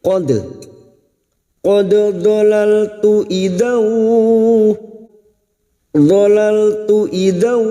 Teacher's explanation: dal sukun yang mati asli di tengah kalimat, qalqalah sugra